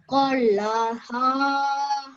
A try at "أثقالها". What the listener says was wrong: The one you did before, you said this one only for 1 second. So you said أثقالها. You said that like that. Whereas it should be أثقالها.